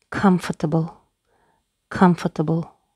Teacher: Бұл сөзде де екпін алғашқы буынға түсіп тұр. Сол буынның дыбысы анық оқылады. Қалған буынның дыбыстары анық оқылмайды. Шуа болып кетеді.